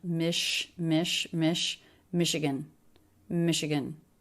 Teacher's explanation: of Michigan uh uh Michigan three syllable word first syllable stress this is one of the words in American English where the letters CH make an sh sound